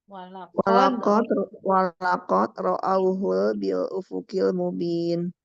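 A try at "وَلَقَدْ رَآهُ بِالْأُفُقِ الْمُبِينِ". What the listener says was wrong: Enggak ro'auhul. Walakad ro'ahu. Nggak pakai hul.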